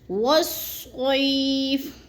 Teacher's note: یا ساکن سے پہلے صاد کے اوپر زبر آ گیا تو اس کو ہم نے لمبا نہیں کرنا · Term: جالین